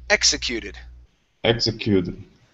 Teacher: so stress at the beginning and we have an ed ending at the end